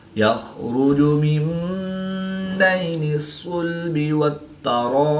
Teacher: الف مدہ کے بعد حمزہ اسی کلمے میں ہے تو یہاں پر مد متصل ہوگی، 3 سے 5 الف تک کھینچ کر پڑھیں گے۔ با وقف کی حالت میں ساکن ہوگا تو یہاں پر قلقلہ صغریٰ کر کے پڑھیں گے · یا ساکن سے پہلے زبر ہے تو یالین اس کو لمبا نہیں کریں گے